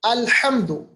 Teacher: دیکھیں لام پہ قلقلہ نہیں کرنا. الحمد، ہا کا مخرج وسط حلق ہے.